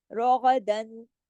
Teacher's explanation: روغدن پورا اظہار ہوگا، کوئی غنہ نہیں ہو رہا یہاں پہ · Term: اظہار حلقی